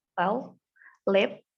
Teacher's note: It's voiced alveolar lateral approximant.